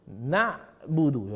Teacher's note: Jadi ain tu memang dia macam ada bunyi tercekik sikit.